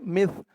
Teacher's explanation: এই সার আওয়াজটা কিন্তু একদম নরম হবে, পাতলা হবে, জিব্বার মাথা উপরের দাঁতের মাথার সাথে লাগবে।